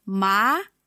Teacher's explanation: Second tone is going up.